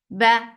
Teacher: for fatha open jaws, the sound is short